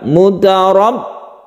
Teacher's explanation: huruf 'r' dalam 'mutarab' harus sedikit dipertebal karena ini adalah 'tafkhim', huruf 'r' memiliki 'fatha ', lalu ada 'tasydid' pada 'ba ', 'mutarab'.